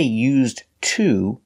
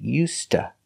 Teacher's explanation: the D is pronounced like a t Ed and to is pronounced T So together you hear UST